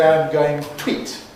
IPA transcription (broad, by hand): aɪm ˈgəʊɪŋ ˈtwiːt